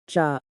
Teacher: It is a plain sound pronounced by touching the tip of the tongue to the hard palate. It is the same as the initial sound produced when pronouncing ja. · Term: jiut